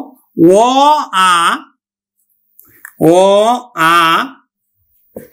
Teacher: এই ধ্বনিগুলো কন্ঠে উচ্চারিত হয়। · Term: কন্ঠ ধ্বনি